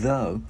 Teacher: Chữ D đưa lưỡi qua giữa hai răng ép rung